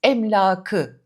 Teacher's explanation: Oradaki a uzar ek alınca. Aslına bakarsanız bu sözcüğün doğrusu emlakidir.